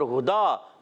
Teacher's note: اور سمعنا، نون کو لام سے ملائیں گے، لام کو ہلائیں گے نہیں. اور ہدا، ہاں پر پیش ہے، ہونٹ گول ہو جائیں گے، ہاں کی ادائیگی حلق کے نیچے والے حصے سے. اب یہاں دال پر کھڑا زبر ہے، اور آپ اس پہ چھوٹی سی مد بھی دیکھ رہے ہیں.